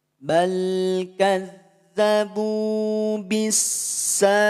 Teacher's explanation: Anhar lam sukun bertemu dengan huruf lam nol harakat mutam Silen leburkan lam Yang Pertama masukkan pada lam yang kedua